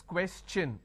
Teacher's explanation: When I have the word question, the tion becomes ch-n. So it becomes question.